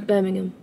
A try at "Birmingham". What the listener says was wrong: No, Birmingham. You say Birmingham, but it's when people call it Birmingham. There's a G in there. I'd like you to pronounce the G.